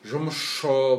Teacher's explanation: С мен ш келген кезеңде жұмысшы деген кезде жұмысшы болып барлығы да шыға ауысады екен